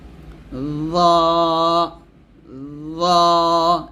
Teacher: জিহ্বার আগার সামনের উপর দুই দাঁতের আগার সঙ্গে লাগিয়ে কমল সুরে অর্থাৎ নরম সুরে আমরা এই জটা উচ্চারণ করব